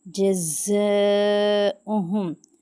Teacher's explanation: مد ہے، اس کے اوپر 5 الف کے برابر کھینچیں گے